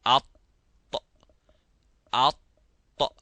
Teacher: the middle part of the tongue goes to the roof of the mouth, as well as the tip, which is called the ra's. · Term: al-itbaq